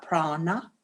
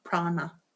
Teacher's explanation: when you say prana in future, it is a cerebral na. So you take the tongue up there, prana. Again, Sanskrit does what it says.